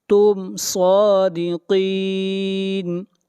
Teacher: یہاں پر میم کو ظاہر کر کے پڑھیں گے، اظہار ہوگا